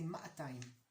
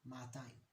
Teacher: So the first, in regular Hebrew, the first vowel is short, but in Jerusalem we lengthen it a little bit, ma'atayim, because of that aleph over there.